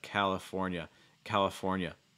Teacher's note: strong l sound i can use like a dark l